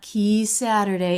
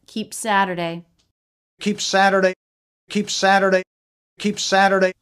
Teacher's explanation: we have a little bit of a stop there for the P, for the stop quality of the P consonant.